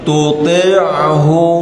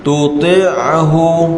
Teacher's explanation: Ain tu jangan kita stopkan. Kita sambung, mengalirkan ain itu.